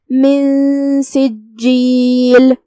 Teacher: کلمت سجیل میں جیم پہ تشدید ہے، لہذا دو حرف کے برابر ہمیں جیم کو ادا کرنا ہے · ہم نون کو بغیر ظاہر کیے ہوئے لیکن غنہ کے ساتھ یہ حکم کو ادا کریں گے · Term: اخفاء